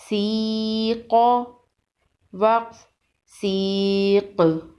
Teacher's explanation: سین یا زیر سی، قاف زبر قا، سیق، وقف سیق۔ وقف کی صورت میں قاف پر قلقلہ ہوگا